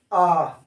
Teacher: आ का उच्चारण कहां से हो रहा है? कंठ से।